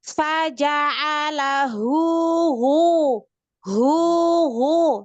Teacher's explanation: ketika sama-sama dhammah, monyongnya itu tetap nggak ada perubahan dari hu ke o. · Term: tetap monyong